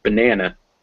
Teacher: in the word banana there are two schwa sounds even though they're all written with an a